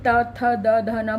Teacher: जब बोलते हैं तो दांतों के पीछे की तरफ जीभ उसे टच करती है तब हम त थ द ध न बोलते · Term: त वर्ग